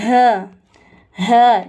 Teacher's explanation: جب ہم یہ ہ کہیں گے تو ہلکی سی سینے میں وائبریشن ہوگی